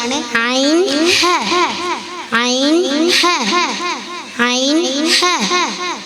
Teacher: തൊണ്ടയുടെ മധ്യഭാഗത്തുനിന്ന് വരുന്ന അക്ഷരങ്ങളാണ് ഐൻ ഹ